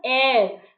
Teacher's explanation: Again, if we look at the spelling of heir, then this is H-E-I-R. But H remains silent and we pronounce it as heir